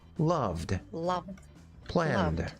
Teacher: love you can tell that it's uh voiced loved Lov planed see how it's voiced there vibration in the throat